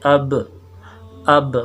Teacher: اور ہونٹوں کا جب تر حصہ آپس میں ملتا ہے تو اس سے با نکلتے